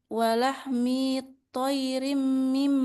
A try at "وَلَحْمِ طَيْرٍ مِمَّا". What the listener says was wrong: Nah, minya jangan dipanjangin. Walahmi طير. Enggak boleh. Walahmi طير.